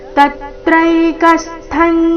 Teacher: ತ ಮತ್ತೆ ಕ ಮೇಲೆ ಆಘಾತ